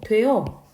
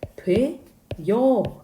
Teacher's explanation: 그런데 이걸 사람들이 자꾸 되여 라고 발음을 하는 거죠. 마찬가지로 단모음 어에 반모음 이가 추가돼서 여로 발음을 하는 거죠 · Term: 반모음 첨가 현상